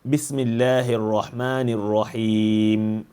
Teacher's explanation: you see that I close my lips right away, right on the mim itself.